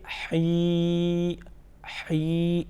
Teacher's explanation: یہاں پر درمیان سے، گلے کے درمیان سے، یہاں پر وسط حلق سے حی